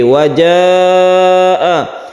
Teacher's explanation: Wajaa ini adalah mad wajib muttasil, panjangnya 2,5 alif.